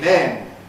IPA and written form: men (men)